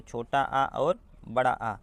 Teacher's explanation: कंठ से कौन कौन से स्वर उच्चारित होते हैं, तो छोटा आ और बड़ा आ